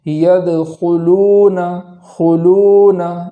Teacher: اور اسی کے بعد لام کے بعد واو مدہ ہے تو اس واو مدہ کو بھی ایک الف کے برابر تاخیر کر کے پڑھیں گے۔